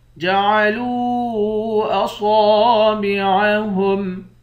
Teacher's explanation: جَعَلُوا أَصَابِعَهُمْ، لام کے بعد واو ہے، اس واو کو ایک الف کی مقدار کھینچیں گے، واو حروف مدہ ہے اور اس پر مد ہے، اس مد کو تین الف کی مقدار کھینچ کر پڑھیں گے۔ صاد کو موٹا بھی پڑھیں گے، ایک الف کی مقدار کھینچ کر بھی پڑھیں